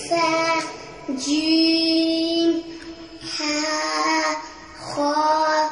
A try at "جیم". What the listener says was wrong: جیم تھوڑا سا لمبا کر کے پڑھیں گے اس کو.